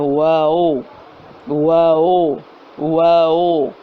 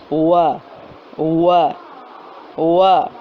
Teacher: آج ہم پہلا مخرج ہے ہمارا واو۔ واو اس کا مخرج ہے منہ کے خالی حصے سے یہ ادا ہوتا ہے، اور ہونٹوں کو گول کرنے سے تمام ہونٹوں کو نامکمل بند کرنے سے ادا ہوتا ہے۔